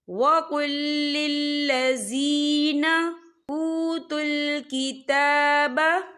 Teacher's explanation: या साकिन से पहले ज़ेर है, तो हम इसे 2 या 3 हरकत के बराबर खींच के पढ़ेंगे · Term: या मद्दा